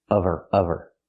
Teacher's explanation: we need the v sound in of because we don't pronounce the h in her. We link the sounds.